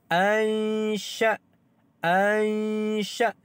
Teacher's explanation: Nun mati ataupun nun sakinah bertemu dengan huruf shin. Maka di sini didengungkan dua harakat kerana ikhfa haqiqi. Ikhfa hakiki didengungkan dengan dua harakat.